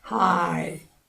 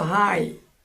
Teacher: 하 하고 있다가 성대가 진동되는 동안에 이로 넘어가서 하이. 네, 이중 모음 1음절입니다.